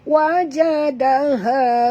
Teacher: Da sini lembut, jangan tebal ya.